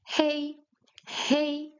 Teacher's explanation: In Chinese the h is voiced. So you pronounce it hey.